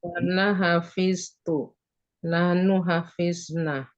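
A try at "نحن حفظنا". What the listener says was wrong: Panjangin. Jangan dipendekin.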